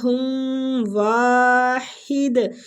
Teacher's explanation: ادھر رک رہے ہیں اس لیے دال پہ کلکلا کر رہے ہیں